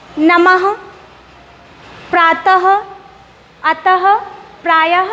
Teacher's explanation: देखिए जब मैं इन वर्णों को बोल रही हूँ तो लास्ट में हमें हा ध्वनि सुनाई पड़ रही है। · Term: विसर्ग